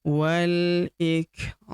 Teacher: Alifnya tidak dibaca atau dianggap tidak ada. Wal ik huruf kaf berharakat sukun kita berikan hembusan tipis